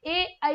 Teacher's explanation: कंठ तालु से ए आई बोला जाता है।